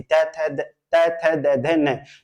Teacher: जीभ के अग्रिम भाग कहां पे स्पर्श करता है दांत से स्पर्श करता है